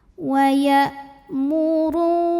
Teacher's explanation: Hamzah punya sifat namanya syiddah, kuat. Jadi saat kita tekan ke makhrajnya maka suaranya tertahan. · Huruf ro dibunyikan secara tafkhim karena ro-nya ini berbaris di atas dhammah, maka dibaca tebal. Wa ya'muru ru madhabi'i dhahiri karena ada waw sukun didahului baris dhammah, maka ro-nya panjangkan dua harokat saja.